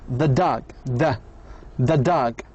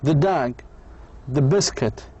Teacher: Linking the to a word that begins with a consonant sound requires saying the vowel as a very quick schwa.